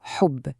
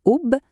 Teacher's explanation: Il ne faut pas dire oub, mais bien hubb, avec ce petit souffle qui vient du fond de la gorge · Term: ha expiré